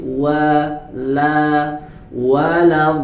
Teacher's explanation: padahal lamnya harus dibaca tipis